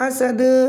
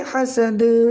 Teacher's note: حالت وقف میں دال کا زبر ختم ہو جائے گا، دال ساکن ہو جائے گا، حالت وقف میں قلقلہ ہوگا قلقلہ کبریٰ